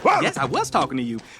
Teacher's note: we hear Donkey drop the G sound in the word talking and link it to a reduced form of to, which would sound like t.